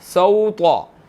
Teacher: یہاں پر طا موٹا ادا کریں گے ہم